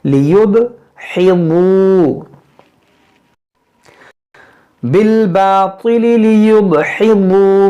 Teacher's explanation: बिलबातिल लियुदहिदू, यहाँ पर देखें दाल है, यहाँ बुआद है, दोनों फर्क करेंगे, दाल को बारीक पढ़ेंगे, बुआद को मोटा।